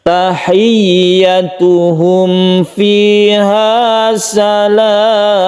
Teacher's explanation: Tahiyyatuhum. Ya tersebut mempunyai tasydid sehingga dari ha ini kita tekan ke ya-nya. · Salam ini boleh kita panjangkan sampai 3 alif karena dia itu adalah mad tabi'i menghadapi huruf yang disukun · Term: mad arid lisukun